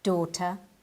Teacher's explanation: them the word daughter is pronounced with a long o at the beginning like do the GH is silent the T is an English T and the r is silent too